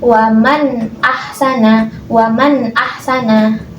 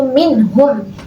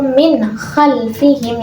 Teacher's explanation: cara membaca nun sukun atau tanwin yang seperti ini itu harus jelas, nggak boleh samar ataupun dengung. Nah, contohnya yang pertama nih ada nun mati jumpa hamzah. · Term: idhar